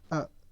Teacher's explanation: ऐसे ही मध्य स्वर अ देखिए आपके जो जीभ का उसका बीच वाला भाग सक्रिय हो रहा है। उठ रहा है